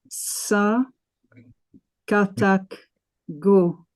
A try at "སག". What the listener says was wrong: No. Sa katak ga. Sa and ka tied together, it became ga, right?